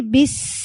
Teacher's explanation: بی اور با کو آپ سین سے ملائیں گے, سین کی آواز جاری رہتی ہے